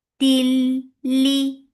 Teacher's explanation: Till, for kasra give e sound attached with lam, and here there is idgham without gunna, so you are not keeping the sound in your nose at all. Till, li, for kasra give e sound, the sound is short.